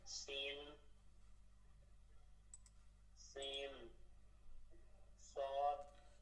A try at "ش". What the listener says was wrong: শিন, সিনের পরে কি শিন, দুইটা আলাদা হরফ। সিন এর পরেরটা হচ্ছে শিন, সিন শিন, শিন শিন।